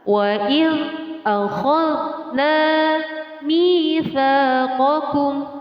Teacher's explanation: ketika kita bertemu atau melafazkan zal sukun tersebut tidak boleh dipantulkan, maka harus ditahan.